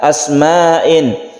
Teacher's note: maka membacanya itu wajib panjang sepanjang dua setengah Alif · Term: mad wajib muttasil